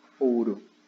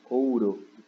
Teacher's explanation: a gente tem o O, que é a vogal, e o U, que é a semivogal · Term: ditongo